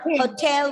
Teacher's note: in this particular word, the stress is not given on the first syllable, but on the second syllable